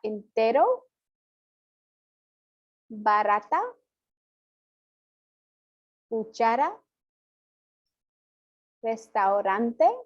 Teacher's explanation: It is much softer than the R in English, which is much more harsh. It's almost like a D sound rather than an R sound. So it's somewhere, maybe kind of somewhere in between that D and R. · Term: single R